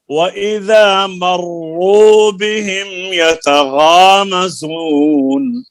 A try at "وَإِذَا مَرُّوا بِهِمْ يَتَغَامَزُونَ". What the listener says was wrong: وإذا مروا بهم يتغامزون. وإذا مروا بهم يتغامزون.